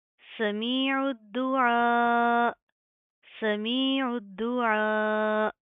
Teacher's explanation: आगे हमजा ज़ेर ई, वक्फ की सूरत में क्या है, हमजा के ऊपर जज़्म आएगी, फिर हम झटका देंगे। ये रूल भी आपको हर लेसन में बताया जाता है कि कुरान पाक में जहाँ पर भी हमजा के ऊपर जज़्म आएगी हम झटका देंगे।